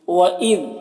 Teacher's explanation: ذال کو باریک پڑھنا ہے اور ذال میں قلقلہ نہ ہونے پائے اس کا خیال رکھنا ہے۔